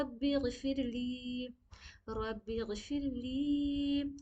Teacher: تو یہ جو ربی غفرلی ہے, اس میں غین کو بس پر کریے گا, را کو بھی پر پڑیں گے کیونکہ را پر زبر ہے · غین کو یاد رکھنا کہ غین کو منہ بھر کے پڑھنی ہے, لام یا زیر لی میں کھینچنی ہے. · لام یا زیر لی کو کھینچیں گے